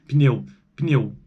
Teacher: tem uma vogal aí entre o P e o N, não tem? Entre as consoantes. Isso é característica do português brasileiro e influenciado por línguas africanas, porque no português de Portugal isso quase não tem esse fenômeno linguístico, né?